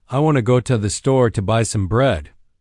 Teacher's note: The main beats are on want, store, and bread. The little words in between are reduced and linked together. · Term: sentence rhythm